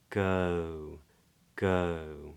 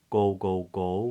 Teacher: lips neutral but then we round on it go go yeah not goal goal goal with lips already rounded · that's pronounced with the tongue in the middle of the mouth to begin with in a sort of position of a schwa gegege girl lips neutral but then we round on it go